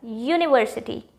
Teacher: University starts with ya, university, and ya is a consonant sound.